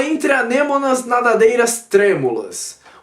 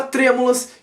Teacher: A palavra trêmulas, que está rimando com anêmonas, vão formar uma rima esdrúxula, porque tanto tre e tanto anê são sílabas tônicas de suas respectivas palavras, trêmulas e anêmonas